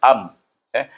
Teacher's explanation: Daripada pangkal halqum terus kepada makhraj bibir tutup am, tutup bibir kerana huruf mim adalah huruf bibir, iaitu makhraj bibir yang tertutup.